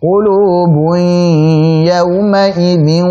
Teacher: Memasukkan tanwin kepada huruf ya, disitulah baru kita masukkan ke al-khayshum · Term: idgham bi gunnah